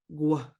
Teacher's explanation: Remember in Lushootseed, if you've got those floating W's, you're going to be blowing out. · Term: G raised W